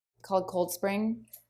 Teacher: her voice goes up in Pitch she's not done with what she's saying